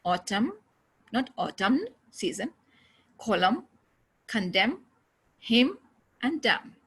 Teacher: this n sound is not pronounced okay if it comes after m at the end